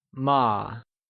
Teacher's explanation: ma is pronounced using a neutral tone, which carries a soft falling sound, as if the sound is fading away